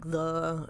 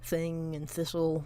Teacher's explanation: they sort of have a different th sound but we don't really even notice that it's a different sound that one is voiced and one is not